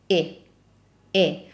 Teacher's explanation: when we have an ending E, which has no stress mark on it, like in grazie, the E sound is closed